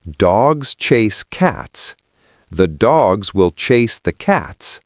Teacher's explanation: The words 'the' and will were squashed. They became tiny.